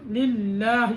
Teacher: ये लाम बारीक करेंगे, ये लाम मोटा नहीं करेंगे